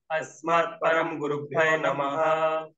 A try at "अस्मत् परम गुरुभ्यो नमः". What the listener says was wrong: हाँ, जो प र और म जो है ना, म आधा नहीं है, म पूरा है। अस्मत् परम गुरुभ्यो नमः। अस्मत् परम गुरुभ्यो नमः।